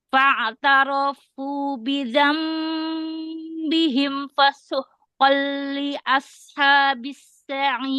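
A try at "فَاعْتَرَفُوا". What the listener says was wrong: Ya, ulang. Ro-nya jangan dipanjangkan. Fa'tarafu.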